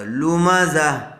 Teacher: اور اگر ہم یہاں پر وقف کرتے ہیں، آگے نہیں ملاتے ہیں، تو جب آیت کریں گے تو گول تا کا ہا ساکنہ بن جائے گا